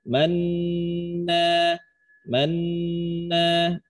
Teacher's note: Jadi sentuhkan dulu bunyi N-nya, man. Man, sesudah itu monyong. Man, masih dengung, terus balik. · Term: ismam